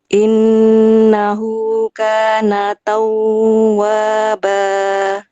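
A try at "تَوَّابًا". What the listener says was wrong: Taunya di sini enggak dialirkan. Tawwaba enggak lama. Tawwaba langsung. Enggak pakai gunah, enggak tau gunah.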